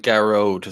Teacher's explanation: first emphasis on the first syllable